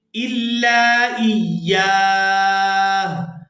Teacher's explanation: وقف کرتے ہوئے ہم ہا کی آواز کو بھی واضح کر کے ادا کریں گے